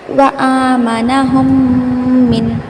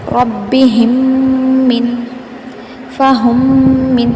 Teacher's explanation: اگر میم ساکن یعنی کہ سکون والی میم کے بعد دوسرے کلمے میں میم ہو تو پہلی میم کو دوسری میم کے ساتھ ملا کر ایک الف کے برابر غنہ کریں گے، اس کو ادغام شفوی کہتے ہیں۔